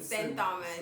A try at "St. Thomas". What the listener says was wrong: St. Thomas. Kill me dead, that H is silent.